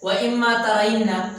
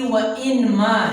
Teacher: نون اور میم آپس میں قریب قریب آ گئے، اسی وجہ سے آپس میں اس کا ادغام ہو گیا، ایک دوسرے میں مدغم ہو گئے، تو اصل میں یہ وَإِنْمَا ہے۔